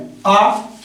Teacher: आ को बोलते समय मुख पूरा खुला रहता है